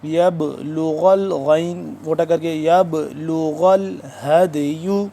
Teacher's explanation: اس پہ بھی قلقلہ کریں گے با ساکن پہ